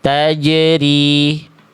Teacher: Tempat keluar huruf jim itu dari tengah lidah, ya, diangkat sampai menyentuh ke langit-langit di atasnya. Jadi betul-betul jangan sampai ada celah. · Bahkan itu Bunda tidak ada pantulannya. Harusnya jim sukun itu memantul dan bunyi nafasnya hilangkan.